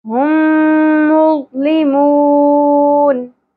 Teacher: میم ساکن کے بعد میم مشدد، ادغام شفوی یا ادغام مع الغنہ دونوں کو ملا دینا ہے ، ہم، ٹھیک ہے، غنہ بھی کرنا ہے، ضو پر ہوگا